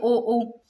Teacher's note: होठ गोल परंतु ध्वनि देखो कंठ से आ रही है · देखो होठ भी गोल हो रहे हैं, ओ बोल के देखो, अपने होठ तो अपने गोल हो ही रहे हैं